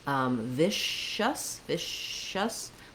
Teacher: with that shh sound my tongue is back for the shh a lot of air can come out and that sound can can can continue and for uh but